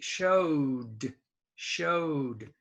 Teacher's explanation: the o is voiced so the d is voiced